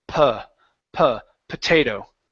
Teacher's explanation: Instead of saying potato, it's potato. And so the first O is actually a schwa.